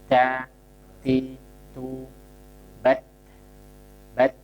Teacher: Jadi saat diucapkan ada nafas terdengar, tapi tidak berlebihan. Da, ti, tu, da, ti, tu, nafasnya dialirkan.